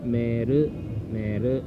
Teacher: I prolong the e, meru.